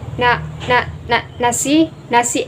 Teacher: terdapat penambahan atau pengulangan fonem konsonan N dan fonem vokal A